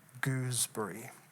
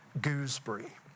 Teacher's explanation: It elongates itself. It makes us enact an almost childlike, round, long vowel.